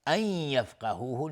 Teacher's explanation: نون ساکن بعدش یا ادغام با غنه، یفقهوه قاف از حروف استعلاست غلیظ تلفظ میشه.